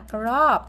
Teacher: o ngắn thì chúng ta đọc giống như âm o của tiếng Việt nhưng ngắn hơn Bật nhanh hơn